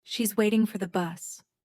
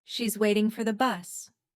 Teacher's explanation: Which words are strong? Waiting and bus. The other words are weak. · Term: rhythm